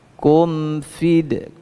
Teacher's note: jangan terputus bunyi mim sukunnya dengan huruf setelahnya